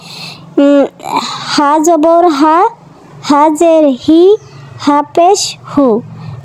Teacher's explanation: গোলহা স্বাভাবিকভাবেই হলকের শুরু থেকে আদায় হবে। আমরা যেরকম বাংলা অক্ষর হ উচ্চারণ করি ঠিক সেভাবেই হা জবর হা, হাজের হি, হা পেশ হু।